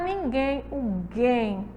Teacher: todas as palavrinhas aí elas são oxítonas porque a sílaba mais forte é a última